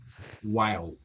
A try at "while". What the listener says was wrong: Oh, but not while. Remember, L. So because of Portuguese, we translate the idea that L equals U. No, in English, this is not true. So see that I don't say while. No, I say while.